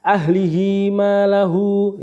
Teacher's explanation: madsah qasirah panjangnya satu Alif atau dua harakat